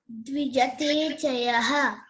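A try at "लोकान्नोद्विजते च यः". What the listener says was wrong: Here you cannot split that one. That's why you should say lokano dvijate chayaha.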